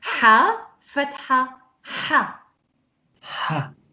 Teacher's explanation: the sound of ha, it comes from the throat. It doesn't come like air from the inside.